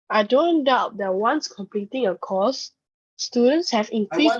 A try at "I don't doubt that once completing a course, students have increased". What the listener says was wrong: I want to read the I don't doubt that once completing a course, comma, right? Pause.